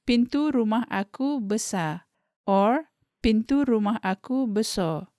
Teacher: the pronunciation of besar has the R dropped